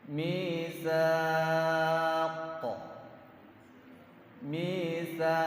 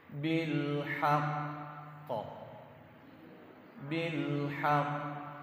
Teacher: Qalqalah kubro ada jarak. Qalqalah akbar tambah jarak.